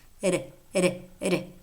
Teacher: the first one is that it is known as a tap it's a voiced alveolar tap meaning that there is a single tap of the tongue tip against the alveolar Ridge that it it it it you need to be careful with